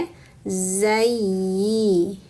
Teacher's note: bima agwaitani lauzayyinanna [Musik] la fil agwaitani waitani harfun lin sempurnakan wa lalu naikkan tengah lidah untuk ya sukun agwaita lauzayi yanya bertasydid, teman-teman maka tahan dulu yanya